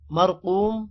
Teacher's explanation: را موٹا ہوگا، اور قوم قاف بھی موٹا ہوگا، قاف کے بعد واو ہے، تھوڑا سا لمبا کریں گے.